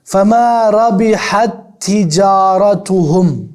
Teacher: وہ دونوں تا ایک میں مدغم ہو گئی, حتیٰ کہ آپ کو فرق, آپ کو ہی نہیں لگا کہ دو تا ہے.